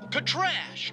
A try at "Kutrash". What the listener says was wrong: No! Roll your tongue!